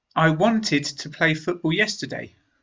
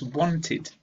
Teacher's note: Want becomes wanted. We add this /ɪd/ sound